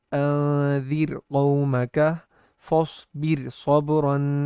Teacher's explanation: اگر را کے بعد حروف مستعلیہ الگ کلمے میں ہوں، یعنی دو الگ کلموں میں ہو، را جو ہے وہ پہلے کلمے کے آخر میں ہو اور حروف مستعلیہ دوسرے کلمے کے شروع میں ہو، تو ایسی صورت میں را کو باریک پڑھیں گے، جیسے انذر قومک فاصبر صبرا۔